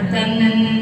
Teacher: نون کے اوپر تشدید ہے تو نون مشدد کہلائے گا، اور نون مشدد کو ہمیشہ غنّے کے ساتھ ادا کیا جاتا ہے۔ غنّے کے معنی ہے ناک میں آواز چھپانا، اور غنّے کی مقدار ایک الف کے برابر ہے، تن۔